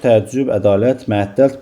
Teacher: burada bütün sözdə də vurğu son hecədir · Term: vurğu son hecəyə düşür